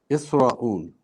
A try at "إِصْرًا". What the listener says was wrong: No, ra with two fathas.